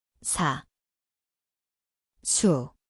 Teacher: Evo slova. 시옷, Zvuči kao S. Mjesto je desni, šištanje. Sada dodajte samo glasnik i slušajte.